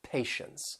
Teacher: they have that T-I-E, which is pronounced sh, with that schwa sound